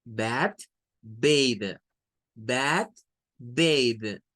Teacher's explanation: en términos de la TH, esta se vuelve vibrante, ya no es como la anterior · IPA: /ð/